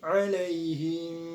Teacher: hukum bacaan mad arid disukun. Mengapa? Karena alaihim, nah panjangnya boleh 2, 4 ataupun 6 harokat